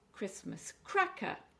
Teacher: again it's four syllables and we're stressing the cra.